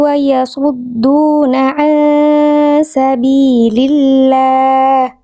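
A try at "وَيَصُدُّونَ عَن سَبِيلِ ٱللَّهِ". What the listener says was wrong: Ainnya tegaskan sedikit lagi agak nanggung. Ainnya kurang duduk makhrajnya.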